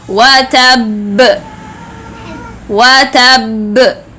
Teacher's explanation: When I want to stop here, I will stop with ba sukoon, so I will move this ba to deal with it with a qalqala, but the strongest qalqala ever